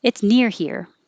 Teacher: near is giving more information so that's what i would emphasize